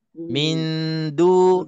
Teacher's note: Jadi sekurang-kurangnya pastikan tepi lidah depan ini tikam belakang gigi atas kita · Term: makhraj dal